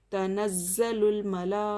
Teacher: हमज़ा उसी कलीमे में है तो मद्दे मुत्तसिल होगा। 3 से 5 अलिफ के बराबर खींच कर पढ़ेंगे